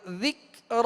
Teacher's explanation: ہدی وذکر، ذال کو نرمی کے ساتھ پڑھیں گے۔ ذکر، را پر کھڑا زبر ہے، را کو پر پڑھیں گے